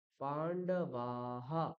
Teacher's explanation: বিসর্গের আগে ধরুন আকার দিয়ে বিসর্গ আছে, তাহলে উচ্চারণ কি হয়ে যাবে, বিসর্গটা হা উচ্চারণ হয়ে যাবে